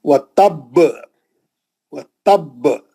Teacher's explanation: خلخلہ بہت سخت ہوئے گا, سالڈ ہوئے گا, تھوڑا بھاری ہوئے گا